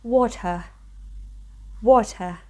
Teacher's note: We skip the pronunciation of R in British English